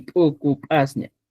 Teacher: El labio superior e inferior se unen cerrando el paso del aire, se cierra el paso del aire y, Explosión. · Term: la simple